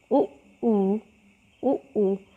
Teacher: ऊ इनका उच्चारण स्थान ओष्ठ है